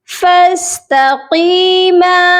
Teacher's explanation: قاف کو موٹا کریں گے اور یا مدہ کے ساتھ جب ملائیں گے تو ہم اس کو لمبا بھی کریں گے 1 الف کی مقدار